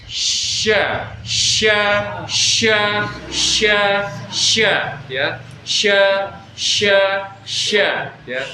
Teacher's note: Udara ya itu deras keluar ya di rongga mulut. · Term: shin tafashi